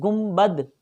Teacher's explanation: نون ساکن یا تنوین کے بعد اگر حرف با آ جائے تو اسے میم ساکن سے بدل کر اخفا کریں گے، غنہ کر کے پڑھیں گے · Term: اقلاب